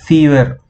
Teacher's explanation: my lower lips are getting twisted inside my mouth and caught hold by the upper teeth